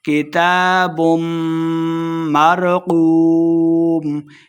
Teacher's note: کتاب تا کے اوپر کھڑی زبر 2 حرکات لمع کریں گے، میم مشددہ غنہ کریں گے۔ کتاب مرقوم واو مدہ 2 حرکات لمع کریں گے اور آخر پہ ہم نے وقف کا دینا ہے۔